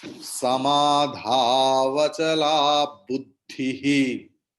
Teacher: After buddhi, please put visarga, and the visarga's pronunciation will be ha, and ha will take the previous swara, that is e.